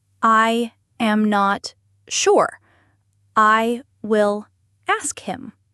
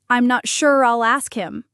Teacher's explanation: The will almost disappears.